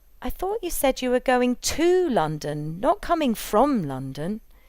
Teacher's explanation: the prepositions to and from would be accented, given greater prominence, as they are the key to the meaning of the message